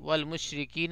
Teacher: را جو ہوگی باریک ہوگی کیونکہ را پہ زیر ہے